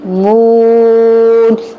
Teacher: اس میں نون کی آواز نہیں آئے گی غننے والی, اس میں غنہ ہو بھی نہیں رہا